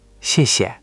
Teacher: Just let that second syllable fall away even softer. Don't give it equal weight.